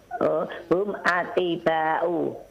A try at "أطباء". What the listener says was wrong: Nah, atibba'u yang ditasdid adalah ba'nya.